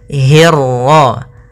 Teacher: pada lafal hirra, hi-nya tipis, ketemu ro-nya yang tebal. Hirra. Jangan hirra. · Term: ro tafkhim